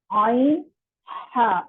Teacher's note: یہ دونوں حروف حلق کے درمیانے والے حصے سے ادا ہوتے ہیں. زبان پیچھے حلق کی طرف مضبوطی سے لے جاتے ہوئے باریک آواز میں عین ہا. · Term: عین اور ہا